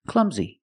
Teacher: last sound is a long e like green beans clumsy clumsy the stress is on the first syllable